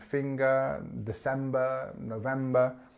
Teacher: you can have this scale between uh and R okay depending on where you are in the country